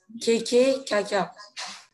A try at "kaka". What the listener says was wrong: Alors que t'as trop dit kaka. Kaka, c'est un peu plus... ça vient de la gorge.